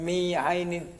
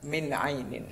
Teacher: Nah, ini ada huruf nun mati bertemu dengan huruf ain. Huruf ain itu adalah huruf izhar. Nah, ya kan, huruf izhar. Maka nunnya dibaca jelas.